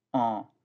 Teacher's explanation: a nasal marking, which means you need to pronounce the sound through your nose.